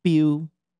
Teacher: some people that feel that they hear almost like an unaspirated L at the end kind of trailing off